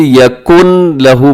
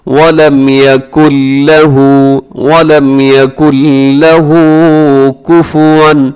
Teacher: اس میں نون کی آواز ختم ہو جائے گی کیونکہ یہاں ادغام بغیر غننے کے ہو رہا ہے، اسی یکن لہو پڑھنا درست نہیں ہے.